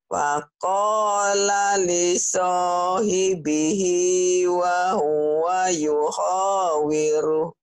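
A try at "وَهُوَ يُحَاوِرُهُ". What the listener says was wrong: Bukan yuho tapi yuhawir. Yuhawiru.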